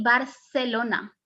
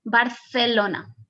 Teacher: i say barcelona almost like an s but in spain you will hear more like a th sound